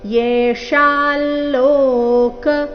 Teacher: ಅನುಸ್ವಾರದ ಉಚ್ಚಾರಣೆ ನಾಸಿಕಾ ಲ ರೀತಿ